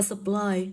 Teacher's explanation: trọng âm không rơi vào âm ơ, nhưng mà trọng âm lại rơi vào nguyên âm đôi. Vậy nó sẽ rơi vào âm tiết thứ hai của từ.